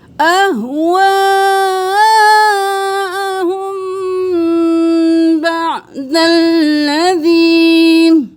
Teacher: میم کے بعد جب بھی با آئے گا غنہ ہوگا